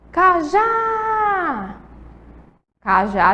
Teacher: a última sílaba é mais forte